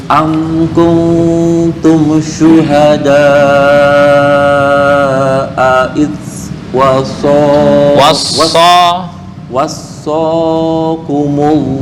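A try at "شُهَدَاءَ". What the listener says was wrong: Kepanjangan shotnya, 2 harokat aja.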